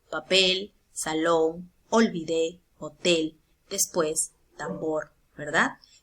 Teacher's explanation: tengo varias palabritas que son agudas porque su mayor fuerza de voz está en la última sílaba